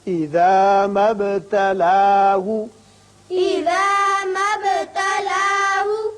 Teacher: با ساکن ہے، اس کی صفت قلقلہ ادا کریں گے، مد نہیں پڑھیں گے.